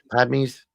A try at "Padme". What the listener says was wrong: There's no extra a in that.